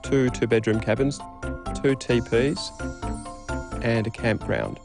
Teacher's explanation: A level tone or a low rising tone can also be used for listing.